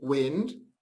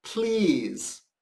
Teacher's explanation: I can be either I, as in wind, or a longer E, as in please.